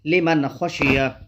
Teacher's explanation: نون ساکن ہے، اس کے بعد حروف حلقی کے 6 حرفوں میں سے خو ہے، اس لیے نون ساکن کی آواز کو ظاہر کر کے بلا غنہ جلد پڑھیں گے